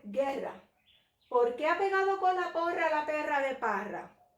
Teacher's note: Tomé una pausa corta para decir guerra y luego de guerra me sostuvo un poquito más para comenzar y cambiar la entonación a una pregunta.